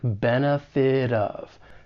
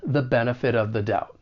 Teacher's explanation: When the T comes between two vowel sounds, often I am going to say it as a flap T. It's going to sound more like a soft D. And then I can link that flap T with the beginning vowel sound in of.